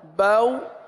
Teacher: रफ लीन को बगैर खीचे बगैर झटका दिए अगर इस तरह पढ़ेंगे बऊ तो ये क्या हो गया खींचना